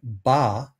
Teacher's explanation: to release the air that's built up pressure behind our lips that release is going to cause a burst of air to come out of our mouth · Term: stop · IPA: [b]